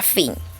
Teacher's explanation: Los labios dentales. Los labios inferior y los dientes superiores se tocan.